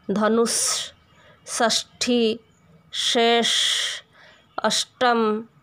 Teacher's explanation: मूर्धन्य का उच्चारण अधिकतर लोग तालव्य जैसा कर देते हैं, परंतु कोशिश करके इसका मूर्धन्य उच्चारण किया जा सकता है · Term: मूर्धन्य स